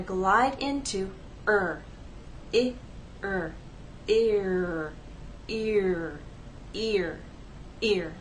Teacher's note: so let's use these transcriptions what you're going to do is take the first vowel sound and glide in to the r sound